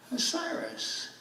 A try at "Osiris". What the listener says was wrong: She said it wrong. The demon can't even say Osiris correctly. She said Osirius.